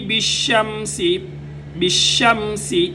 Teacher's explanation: بالشمس، سین سیٹی کی آواز آئے۔ تین حروف ایسے ہیں جن کو ادا کرتے ہوئے سیٹی کی آواز آنی چاہیے، جن میں سے ایک سین بھی ہے، صاد زا سین، یہ تین حروف ہیں۔